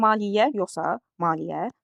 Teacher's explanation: Maliyyə sözü iki ilə yazılır və maliyyə tələffüzə də biri düşür a da uzanır